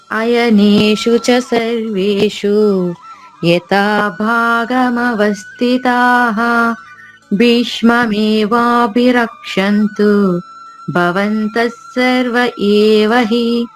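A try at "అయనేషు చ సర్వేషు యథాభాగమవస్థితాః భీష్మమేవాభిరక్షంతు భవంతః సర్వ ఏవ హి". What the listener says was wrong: అమ్మ మహాప్రాణాల మీద కొంచెం దృష్టి పెట్టాలమ్మా. ఇందులో చాలా ఉన్నాయి. యథా భాగమవస్థితాః భీష్మమేవాభిరక్షन्तు భవంతః సర్వ ఏవ హి. ఇవన్నీ కూడా మహాప్రాణాలే.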